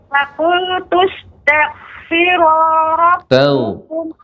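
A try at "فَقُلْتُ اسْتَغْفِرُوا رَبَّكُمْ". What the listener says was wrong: Ya, lebih dipanjangkan lagi. Makhraj ghain isti'la Ibu. Jadi koreksiannya ghain, sifat ghain bukan makhraj, afwan. Sifatnya dari ghain adalah isti'la. Ya, terutama ketika sukun jadi dibaca tel. Jadi tidak langsung berhenti tak.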